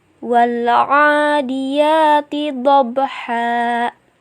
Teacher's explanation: Ba sukun dibaca qalqalah yang berarti jelas dan memantul.